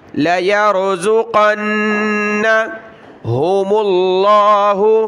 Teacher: نون پر غنہ ہوگا، غنہ یعنی ناک میں آواز پیدا کریں گے